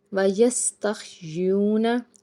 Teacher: सीन जब अदा करेंगे तो सिटी की आवाज़ आनी चाहिए। वयस, ताह ज़बर तह, यस्तख, या वाव पेश यू, वाव साकिन से पीछे पेश है, एक अल्फ के बराबर खींच के इसको अदा करेंगे।